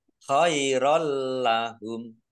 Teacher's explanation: Fathah tanwin bertemu dengan huruf lam, bacaan idgham bila gunnah, masuk dengan tidak mendengung. Jadi langsung masuk ke huruf lam, ditandai lamnya ada tasdidnya, lamnya dibaca double, tidak mendengung.